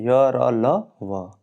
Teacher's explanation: जिन व्यंजनों के उच्चारण में जीवा मुख के किसी भाग को स्पर्श नहीं करती और हवा बिना रगड़ के खाए मुख से बाहर निकल जाती है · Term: अंतस्थ व्यंजन